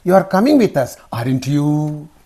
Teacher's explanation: Rising intonation, because you confirm it.